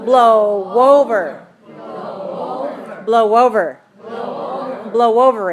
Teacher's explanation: when we make the sound O, there's a little W at the end of it. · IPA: /ow/